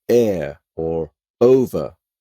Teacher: you can't pronounce words like air or over without closing off your throat initially to sound out the vowel